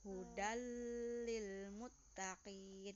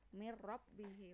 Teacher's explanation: lam dan ro, bacanya tanpa dengung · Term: idgham bila guna